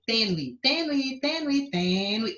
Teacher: Você tem o U como semivogal e o E como vogal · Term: ditongo crescente